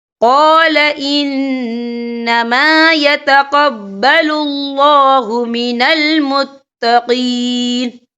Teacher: یہاں نون مشدد ہے، تو یہاں پر غنہ ہوگا